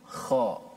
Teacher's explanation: Huruf kha yang mati daripada perkataan akhluqu keluarnya daripada mana? Keluarnya daripada hujung halqum. Ini kita punya leher kita di hujung halqum yang berdekatan ataupun jiran kepada permulaan ataupun pangkal lidah kita.